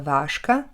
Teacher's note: Napríklad v slove váška napíšeme znelé ž, ale vo výslovnosti ho nahradíme neznelým š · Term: spodobovanie